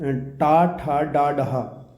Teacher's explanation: मूर्धन्य व्यंजन वो होता है जिसमें जीभा जो है ऊपर की ओर मुड़कर साउंड पैदा करती है